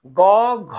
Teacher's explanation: এর উচ্চারণে কিন্তু ফুসফুসের বাতাস আমাদের স্বরনালীতে বেশি ঘষা লাগছে।